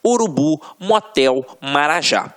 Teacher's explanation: oxítonas. A última sílaba é a tônica.